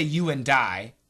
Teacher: the N which is also a strong sound cancels the D